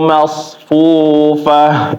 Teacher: Huruf so tebal, tafkhim atau isti'la. Tetapi nggak boleh dimonyongin bibirnya ya, kecuali sebelumnya berharokat dhammah.